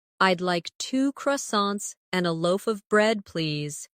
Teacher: In connected speech, loaf of sounds like loafa.